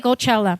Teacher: The common pronunciation is Coachella, with the stress on the second syllable.